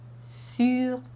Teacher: Notice that my lips take the position for the vowel before I even say the consonant.